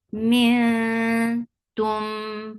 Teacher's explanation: This ikhfa is light. You're keeping your tongue straight. You're going towards the makhraj of ta, and you're keeping the gunna sound into your nose.